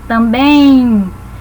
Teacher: Na palavra também, nós temos um ditongo, porque pronunciando também, esse bem no final é como se falássemos um izinho, também. Então, na pronúncia, nós colocamos um i que não existe na escrita. Então, por isso ele é considerado um ditongo, certo?